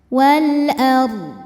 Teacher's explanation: Dibacanya tebal, ard. Dan d disukunkan, huruf sebelumnya sukun, d harus tetap terbaca.